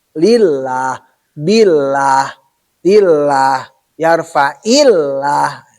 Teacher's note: Karena sebelum lafaz Allah itu kasroh. Makanya ke la-nya itu adalah tarkik.